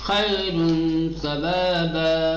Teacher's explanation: ایک دم سمپل طریقے سے ہلکا سا نون نکال کر کے آدھا نون ادا کرو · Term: اخفاء